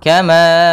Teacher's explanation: Kemudian pada lafal nu ada mad tabi'i lagi, ada yang dhammah bertemu waw. Kemudian pada lafal kama, di sini ada ma, panjangnya yaitu 4 harakat dan ini kita namakan dengan mad jaiz munfasil.